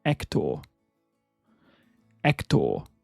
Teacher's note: you could slightly soften the H and elongate the last syllable and make it Hector